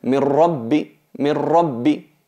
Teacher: Notáis que aquí no hay ni nun ni nasalización. Es totalmente fusionada en la ra. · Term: idgham bi ghayri gunna